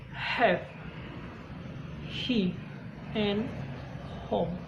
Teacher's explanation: Her sound is called glottal fricative, which means the sound is made with the motion of your vocal cords, but it's not voice. Fricative are sounds which are made by bringing two parts of your mouth or throat very close together and pushing the air through them.